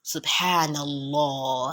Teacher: You can say the fatha, the noon that has fatha before the word Allah. So it will be Allah with O, not with A.